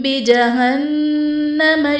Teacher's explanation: بجہنم میں نون مشدد ہے تو یہاں پر غنہ کر کے پڑھیں گے